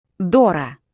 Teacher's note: The O gets the stress here.